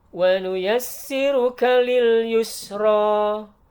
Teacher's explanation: perhatikan ada sin yang bertasydid. Tekan dulu baru pindah. jangan nggak ditekan.